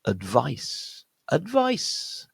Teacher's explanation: the stress point is on the second syllable